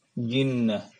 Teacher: Jadi tengah lidah kita ini tersentuh dengan langit-langit. Dan dia juga tidak boleh berdesis, dia syiddah, ditahan ya. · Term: jim